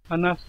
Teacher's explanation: voilà, hanas, vous voyez que c'est un verbe qui se termine par un se, voilà, il n'y a rien derrière, donc on va le prononcer hanas, sans voiser le e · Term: dévoisement